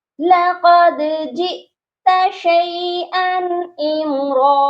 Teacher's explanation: دال کے اوپر قلقلہ بھی کریں گے کیونکہ دال حروف قلقلہ ہے، لقد جئت شیئا امرا، اور را پر دیکھیے گا وہی 2 زبر کا وقف ہے، اور ہم اس کو 1 الف کے برابر لمبا کر رہے ہیں۔